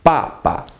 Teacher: Fourth tone, then neutral.